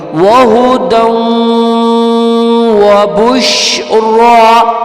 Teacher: دال دو زبر دن کو واو کے ساتھ جوڑیں گے